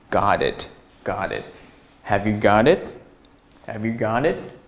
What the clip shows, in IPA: gɑt ɪt